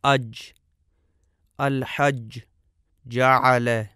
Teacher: جیم کا مخرج ہم اپنے سامنے دیکھ رہے ہیں. زبان کا درمیانی حصہ اور اوپر تالو کے درمیان سے جیم ادا ہوتی ہے، اور ملاحظہ فرمائیں کہ اس کا مخرج بالکل بند ہو جاتا ہے